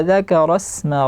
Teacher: Dza tipis, zal tipis, kaf tipis. Dzakara asma, alirkan sinnya, bunyi nafas sinnya.